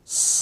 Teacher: इसके उच्चारण में जीवा दांतों को छुए गी जब जीवा दांतों को छुए गी तो वहां से सीटी निकलती है